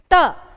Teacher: आपकी जो जीवा है वह दंत को क्या कर रहा है स्पर्श कर रहा है यानी कि दांत को टच कर रहा है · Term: दंत्य